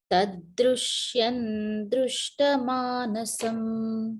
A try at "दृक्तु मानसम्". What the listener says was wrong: Druktu manasam. Not drishya manasam. Tadrishyam druktu manasam.